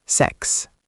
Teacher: This one is crisp, sechs, with that ch like a soft raspy ending.